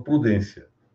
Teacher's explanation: Houve uma perda na palavra de um fonema interior que estava nela. A palavra prudência deriva de providência. E caiu essa sílaba, o fonema vi. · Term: síncope